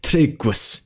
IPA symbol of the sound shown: g:ʷ